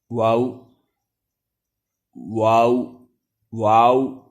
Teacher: دونوں ہونٹوں کو گول کر کے نا تمام ملانے سے واو غیر مدہ ادا ہوتی ہے